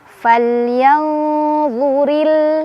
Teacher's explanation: Ri dibaca secara tarqiq karena ra-nya berbaris kasrah, ditipiskan ri.